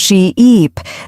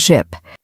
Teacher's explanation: A great way to practice this is by exaggerating the long vowel sounds. Say sheep and stretch the E sound she-eep, then say ship with a short sound ship. · The difference is in how long you hold the vowel sound. Right. A great way to practice this is by exaggerating the long vowel sounds.